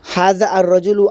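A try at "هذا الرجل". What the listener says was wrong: রাজুলু হবে না তো, হাদার রাজুলু। এখানে আলিফ লাম পড়া হবে না, এই যে পড়ানো হয়েছে অতীতে। হাদার রাজুলু, হাদার রাজুলু, হাদার রাজুলু। রালে গিয়া রার সাথে অ্যাড হইব।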